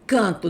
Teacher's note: O radical vai até o T. Então, a sílaba tônica recaiu no radical do verbo. Então, é a forma risotônica.